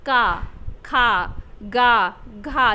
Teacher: तो ये जो का वर्ग के वर्ण होते हैं, का, खा, गा, घा, अंगा, ये कंठ के अंतर्गत आते हैं, मतलब इनका उच्चारण स्थान कंठ होता है। उच्चारण करिए आप, का, खा, गा, घा, जो ये वर्ण निकलते हैं वह कंठ से स्पर्श करके निकलते हैं, ना ये जीभ को स्पर्श करते, ना दंत को, ना मूर्धा को।